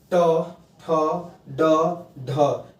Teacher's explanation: ट, ठ, ड, ढ, ये 4 ऐसे वर्ण हैं जिनका उच्चारण जब आप करेंगे तो किससे स्पर्श हो रहा है, मूर्धा से